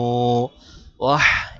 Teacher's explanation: হা গলার ভিতর ঢোকায়